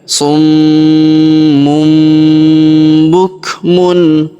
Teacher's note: Kita dengungkan dulu pada huruf munnya, kita tahan dan kita tekan. Summum. Kemudian masuk pada huruf bu ya.